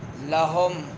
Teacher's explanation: ہا جو ہے حلق کے اس حصے سے جو سینے کے قریب ہے ادا ہوگا